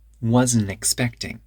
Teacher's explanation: wasn't expecting the T disappears